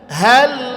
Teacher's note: lam itu tidak perlu ditekan, ngalir aja